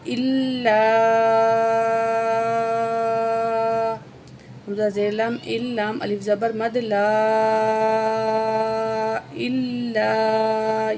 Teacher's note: یہ بڑی مد ہے، کھینچ کے پڑھیں گے 4 الف کے برابر